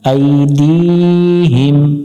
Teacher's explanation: আইন গলা চেপে উচ্চারণ করব